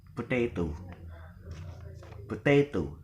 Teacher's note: So the stress is in the penultimate